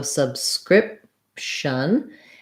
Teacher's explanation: our first syllable, sub, has the vowel schwa. It's unstressed.